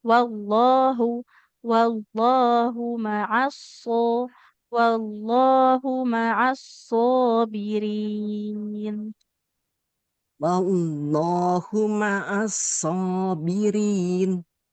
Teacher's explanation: mimnya jangan ditekan, jangan seperti bertasydid ya